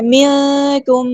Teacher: میم کے بعد میم آیا تو یہاں پہ ادغام ہے شفوی ہو رہا ہے، 2 کاؤنٹس ہم نے یہاں پہ رکنا ہے ادغام کرتے ہوئے ، 2 حرکات رکنا ہے، منکم ایسے، مریضن را یہاں پہ